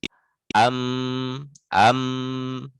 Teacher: Jadi mim sama nun itu pasti masuk hidung gitu, tidak bisa tidak. Ma itu suaranya keluarnya di hidung. am gitu. Karena kalau ditutup nggak akan keluar makhraj ba nggak pas gitu.